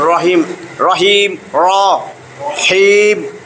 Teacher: র এর উপরেও যদি জবর থাকে মোটা করে পড়তে হবে · আর রহমানির রহিম, দুইটাই মোটা, আর রহমানির রহিম, দেখেন জবর আছে। রয়ের উপরেও যদি জবর থাকে মোটা করে পড়তে হবে